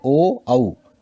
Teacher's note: कंठ भी है और ओष्ठ भी है, ओ औ। आप बोल करके देखिए, इसमें हमारे ओठ गोल हो जाते हैं और कंठ में भी जो है हमारे वायु टकराती है। कंठ में भी हाथ लगा के देखिए, यहाँ भी इसका महसूस होता है कि वायु ने यहाँ भी स्पर्श किया है। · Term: कंठोष्ठ